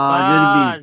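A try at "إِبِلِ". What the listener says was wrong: জের বি, একদম টান হবে না। হুম ই বি, লাম জেরলি, ইবিলি।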